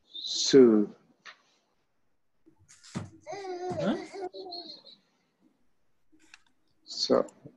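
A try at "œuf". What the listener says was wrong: Is there letter S? No?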